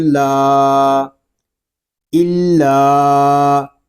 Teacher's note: لام کو ہم ایک الف تک کھینچ کر پڑھیں گے کیونکہ یہاں پہ الف مدہ ہو رہا ہے. الف مدہ اس لیے ہو رہا ہے کہ الف سے پہلے زبر آ گیا ہے.